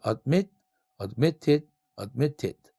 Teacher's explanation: ad라는 첫 번째 음절, mit라는 두 번째 음절이에요. 그런데 액센트가 mit, 두 번째, 즉 마지막 음절에 액센트가 있네요.